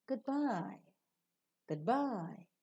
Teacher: the rising tone also is given to the greetings especially associated with partings